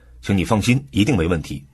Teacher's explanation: 重音放在放心上，强调让你放心